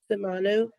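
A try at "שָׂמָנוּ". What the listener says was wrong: Samanu, good.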